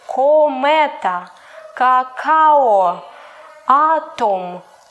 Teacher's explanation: You can hear that sound O stays where it is and the stress is not important.